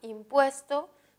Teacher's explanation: impuesto tiene la mayor fuerza en pues, por lo tanto es grave, y como termina en vocal, no lleva tilde.